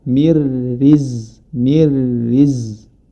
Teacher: huruf ro dibaca tarqik atau tipis karena hur ee harakat sebelum huruf ro ini adalah kas kasrah